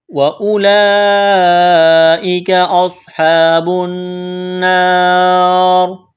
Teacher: واو اضافت کے لیے ہے، لمبی مد ہے، کھینچنا ہے، کاف کو باریک کرنا ہے